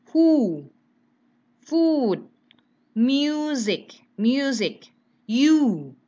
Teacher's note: U-nya panjang. Ya, U-nya agak dimonyongkan.